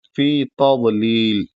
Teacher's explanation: फी हल्का सा खींचना है क्योंकि फी फ के बाद या साकिन है